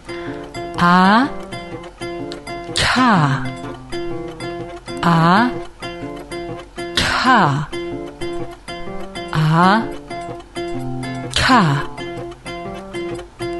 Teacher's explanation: siiva weil die Zunge klebt sich da oben an den Gaumen der Zungenrücken die zungenmitte dahinter staut sich die Luft und dann gibt's eine kleine Explosion und fällt wieder runter die Zunge